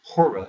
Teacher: the H is not pronounced you just take that off